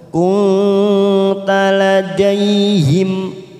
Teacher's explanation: mim sukun bertemu hamzah namanya idhar safawi kita baca jelas. Ladaihim idh huruf dzal bukan qalqalah maka kita tahan jangan sampai memantul.